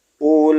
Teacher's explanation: Ulaika, la-nya dibaca panjang, lamnya. Wawunya tidak dianggap, tidak dibaca.